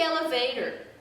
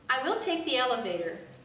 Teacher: because the word elevator is being pronounced incorrectly and that is affecting the intonation which should not be going up but should be going down